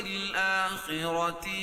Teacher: را بھی پر پڑھی جائے گی کیوں؟ را کے اوپر زبر یہ پیش ہو تو را پر پڑھی جاتی ہے